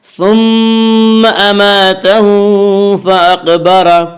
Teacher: ثم میم مشدد غنہ ہوگا، غنہ کی مقدار ایک الف ہے